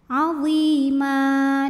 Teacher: Maka cara bacanya baris tanwin fathahnya diubah jadi 1 jadi fathah dan kita panjangkan 2 harokat saja. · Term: mad iwad